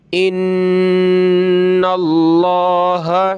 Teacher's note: لفظ اللہ کو موٹا کریں گے، نون پہ زبر ہے اس وجہ سے